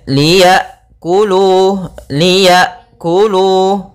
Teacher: tertahannya nafas dan tertahannya suara ketika melafalkan hamzah yang sukun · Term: hamzah sukun